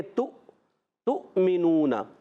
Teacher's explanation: یہ واو کے اوپر جو حمزہ ہے نا, اس حمزہ کی وجہ سے ہم اس کو جھٹکا دے کر پڑھیں گے